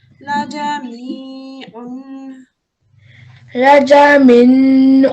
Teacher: There's no noon here. We read it as a me, a prolonged me for 2 second elongation because there's a ya sakina here and this is a kasra.